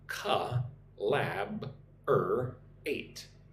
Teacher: 4 syllables. Put the emphasis on the second syllable. 1, 2, lab, collaborate.